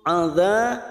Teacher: adza fathah bertemu alif 2 harokat